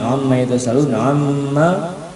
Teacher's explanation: Ini juga sama amma jadi bukan langsung amma, langsung bukan. Di baca N-nya sama baca M-nya agak lama. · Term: guna